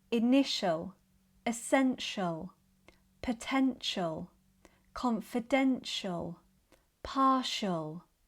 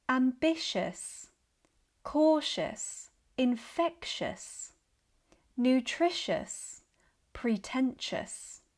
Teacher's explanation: The T also changes to sh in words ending in TIAL, shall, and TIOUS, tious. · in words ending in shon, shall, tious, and tient, the T becomes the sh sound